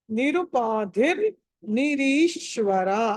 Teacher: నిరుపాధి ధి అన్నది ధ అనేది మహాపురాణం ఒత్తి పలకాలి